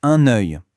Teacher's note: On entend bien ce petit son J à la fin.